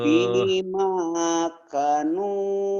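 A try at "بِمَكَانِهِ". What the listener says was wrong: K-nya panjang Pak kalau yang kayak gini. Ini kapnya ada alifnya nih. Ini ada alifnya nih.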